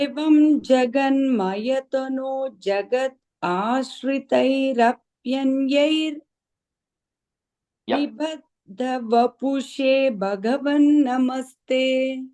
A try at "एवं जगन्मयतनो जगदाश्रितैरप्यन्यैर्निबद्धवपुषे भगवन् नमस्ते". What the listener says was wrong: You said it correctly, except that on the yenyer kapram there is no pause, but that's okay. Once you say it a few times, you'll get that.